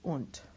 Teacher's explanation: So we have the hooked U because of the double consonant, or the multiple consonants rather, and then the D at the end of a word is pronounced like a T